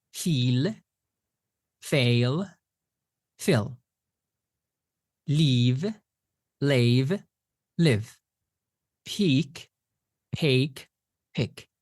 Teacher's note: In class I talked about these three sounds that tend to be confused a lot. So, the long e, the diphthong a, and the short i